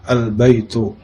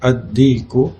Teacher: pengucapan huruf qamariyah, huruf lamnya dibaca secara idhar atau jelas